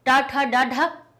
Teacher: मूर्धा में टकरा रही है जीभ